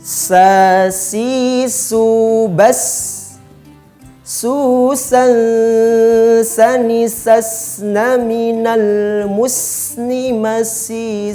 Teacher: Yang ketiga huruf ini, posisi makhrajnya adalah ujung lisan atau ujung lidah kita bertemu sedikit dengan bagian atas kedua gigi seri yang bawah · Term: huruf sin